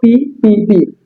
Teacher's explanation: অতিরিক্ত বাতাস বের হচ্ছে না